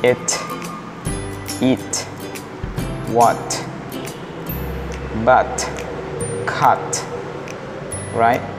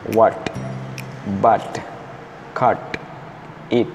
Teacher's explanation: Jadi T berubah jadi D.